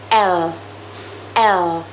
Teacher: Prop L dibentuk dengan menggunakan lidah dan gigi atas serta menghasilkan suara yang cair atau disebut liquid alveolar. Contohnya L.